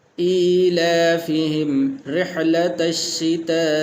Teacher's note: ایلافہم رحلۃ الشتاء، تو یہاں پر را کے نیچے زیر ہے تو اس لیے را کو موٹا نہیں کریں گے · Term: پتلا